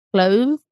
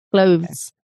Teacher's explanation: For the TH, the tongue goes a little bit out between your teeth, clothes, and then it goes back in for the S